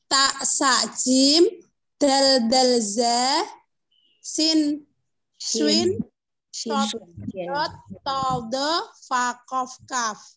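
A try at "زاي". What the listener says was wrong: Cuman untuk mengucapkan apa namanya? Za itu zai, ya. Zai.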